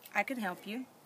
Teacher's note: And she said that can reduces to, the vowel sound in can reduces to the schwa sound.